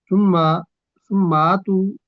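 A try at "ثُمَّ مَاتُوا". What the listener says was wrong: नहीं, आपने सुम मातू पढ़ दिया, सुम्मा मातू।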